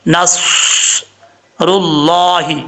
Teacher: دانتوں سے تھوڑا سا پیچھے رکھ کے کم از کم اتنا گیپ ہو کہ سیٹی کی آواز نکل سکے، اور صاد کو پڑھتے وقت زبان وہ اوپر کی طرف اٹھے گی، صاد، اور اس کو فل موت پڑھا جائے گا، موٹا پڑھا جائے گا۔ نصر اللہ، حروف صفیریہ میں سے ہے صاد، اس لیے اس میں سیٹی بھی آئے گی۔ را کے اوپر پیش ہے، را پر پڑھا جائے گا۔